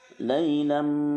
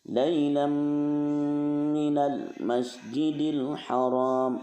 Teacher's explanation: Ya, nun, mim, dan waw. Berarti harus didengungkan. Huruf mimnya itu didengungkan. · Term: idgham bi gunah